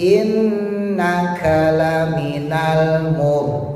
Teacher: nunnya tasdid ditahan minimal 2. Jadi jangan innaka, jangan.